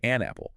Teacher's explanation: The N sound just links right onto the A. Ah, or pick it up.